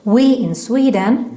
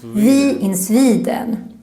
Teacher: W is also hard for us, and we have a tendency to pronounce it more like a V or V sound. So for example, we in Sweden becomes vi in Sweden.